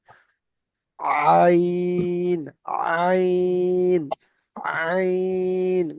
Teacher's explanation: কিন্তু আইনের উচ্চারণটা আপনাকে গলার ভিতরে নিয়ে যেতে হবে